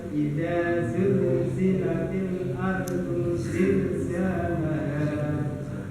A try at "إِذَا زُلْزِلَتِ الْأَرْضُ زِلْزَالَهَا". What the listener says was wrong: Jangan condong ke S ya Pak. Dan jadi kedengarannya lebih agak ke S gitu. Za gitu. Za. Memang makhrajnya berdekatan ya. Za, so, sa, za.